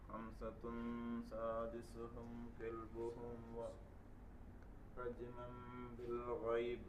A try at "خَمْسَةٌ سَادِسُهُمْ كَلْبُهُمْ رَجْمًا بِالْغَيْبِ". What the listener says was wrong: അങ്ങനെ നിർത്തരുത്. ഗൈബ് എന്ന് ഒറ്റടിക്ക് നിർത്തരുത്. ഗൈബ്.